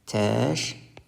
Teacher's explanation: Göründüyü kimi buradakı k samiti g kimi tələffüz olundu